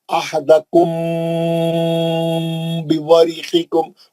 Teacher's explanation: غنہ کریں گے میم ساکن کے بعد با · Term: اخفاء شفی